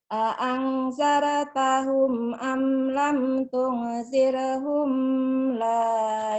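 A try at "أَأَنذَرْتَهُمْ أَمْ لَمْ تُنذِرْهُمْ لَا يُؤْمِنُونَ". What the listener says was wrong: Humnya idhar. Am lam tunzirhum la yu'min. Humnya jangan ditahan. Dilepas ya. A'adzartahum am lam tunzirhum la yu'minun.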